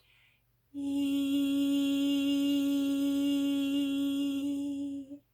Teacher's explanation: Keep that mouth, again, spacious with that ball in it. So starting straight into the E, palatal it is, tongue raised slightly, breathing in, E.